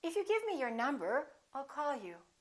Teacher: to indicate that you're not finished, that you have something more to say, let your pitch go up at the end of the first part of your sentence